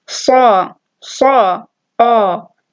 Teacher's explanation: Sad is a tafkheem letter, and so the alif also has tafkheem, and it's said as sa, ah.